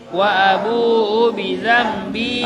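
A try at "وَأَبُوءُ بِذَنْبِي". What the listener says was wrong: Itu panjang karena mat tabii ya, kasr bertemu ya sukun. Jangan dibaca wabu bidzambi, tidak, itu salah. Dia harus panjang.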